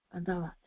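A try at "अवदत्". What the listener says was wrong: Avadat. Va first. Avadat.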